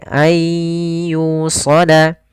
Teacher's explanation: Cara membacanya, karena di sini idgham artinya memasukkan, maka nunnya dimasukkan ke huruf ya sehingga suara nunnya hilang. Tapi di sini idghamnya idgham nakis, tapi tidak terlalu hilang secara keseluruhan, masih ada sebagian. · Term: idgham bi gunnah